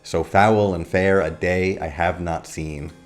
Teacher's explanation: A good example of this is this line from Macbeth, "So foul and fair a day I have not seen." In iambic pentameter, each line has 10 syllables with alternating stressed and unstressed syllables, where the second syllable is stressed · notice how the first word, so, is not stressed, and the words like foul and fair are. The line bounces when you say it.